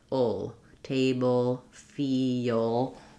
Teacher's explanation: I like to think of it as kind of having the dark L having this extra little or schwa sound before it.